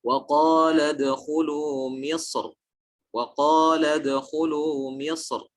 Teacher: Barang siapa ulama yang menganggap adanya huruf isti'la tersebut, artinya sebelum huruf ra ada huruf isti'la dan dia menganggapnya, artinya menganggap sebagai penghalang atau dianggap menjadi perubahan hukum, maka beliau fakhamaha, menebalkan huruf ra